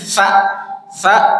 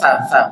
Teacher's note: ujung lidah nyentuh gigi atas tsa tsa bukan sin bukan sya